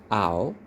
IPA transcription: aʊ